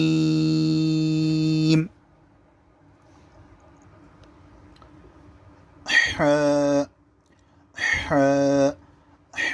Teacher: ہا کی آواز کو آپ کے حلق سے نکالیں گے اور ٹھنڈی سی آواز نکلے گی، اور بالکل ایک دم چیخنا چلانا نہیں ہوتا۔